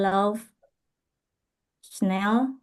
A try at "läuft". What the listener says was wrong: Läuft ya, jangan lauf ya. Läuft.